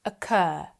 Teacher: In most British English accents, the word occur ends in a vowel sound. Occur.